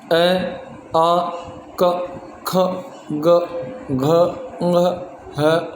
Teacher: इन सब का जब हम उच्चारण करते हैं तो उत्पत्ति स्थान होता है कंठ